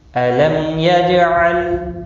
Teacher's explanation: میم کا اظہار ہوگا، جیم ساکن پر قلقلہ ہوگا، لام ساکن کو ہلانا نہیں۔